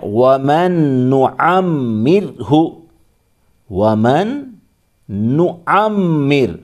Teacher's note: آگے ہے وَمَن نُعَمِّرْهُ، وَمَن نُعَمِّر، نون کے اوپر پیش، عین کو میم میں ملائیں گے، پھر میم کو ڈبل پڑھیں گے، میم کے نیچے زیر بھی ہے.